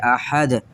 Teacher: قلقلے میں آواز گیند کی طرح لگ کر واپس آتی ہے، تو یہاں پر یہ جو آواز ایسے آپ کو محسوس ہو رہی ہے احد، تو یہ قلقلے کی وجہ سے ہو رہی ہے، اور قلقلہ حرف دال میں ہوتا ہے۔